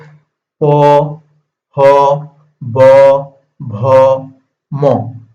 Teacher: এই যে প, হ, ব, ভ, ম আমরা যে উচ্চারণ করতেছি এই দুই ঠোঁটের সাহায্যে এই উপরের ঠোঁটটাকে বলা হয় ওষ্ঠ আর নিচের ঠোঁটটাকে বলা হয় অধর, ঠিক আছে। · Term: প বর্গীয়